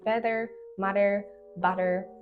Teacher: if you want to pronounce this Double T you keep your tongue retroflex curling back and so the sound comes from the throat really not from